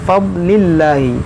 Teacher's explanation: اس میں جلال کو ہم باریک پڑھیں گے کیونکہ یہاں پر زیر ہے۔